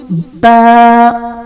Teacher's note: دونوں ہونٹ جو ہیں اوپر نیچے والا آپس میں ملتے ہیں, بالکل ملتے ہیں